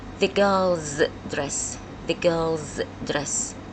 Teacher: The girl ends with le, which is a voiced consonant. So the se here is pronounced as ze.